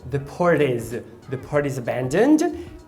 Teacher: Você vai fazer uma junção, uma ligação de port e is e vai fazer o flap.